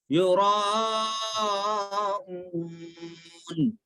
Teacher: حمزہ و پیش او مد ہے، کھینچ کے پڑھنا ہے